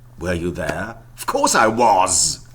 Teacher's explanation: was is stressed you would certainly not weaken it